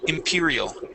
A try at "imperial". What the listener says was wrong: Okay, give me an R sound instead of imperial. Imperial.